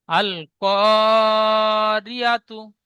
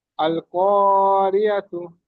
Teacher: কপটা টান দিয়ে পড়তে হবে, কপটা আলিফ মাদ্দা, ইজরা করলেন আল আলিফ ক মাদ্দা এক আলিফ।